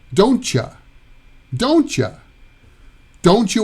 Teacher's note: don't you is usually pronounced don't cha